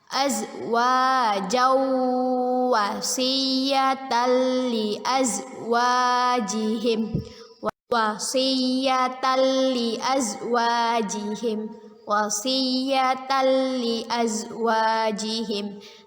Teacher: Azwajawwa idgham bi gunnah. Kita baca dengan memasukkan bacaan tanwin ke huruf waw dan berdengung 2 harokat